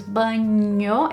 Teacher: Banho is the correct one when your tongue scrapes the top of your mouth, so the roof of your mouth, so it goes banho, it actually scrapes it instead of it just being banho where it doesn't really touch the top of your mouth that much.